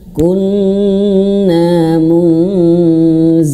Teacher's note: Nun bertasydid wajib ditahan dan bahkan ini menjadi gunnah besar ya, gunnah akmal gitu ya. Gunnah yang ditahan yang lama.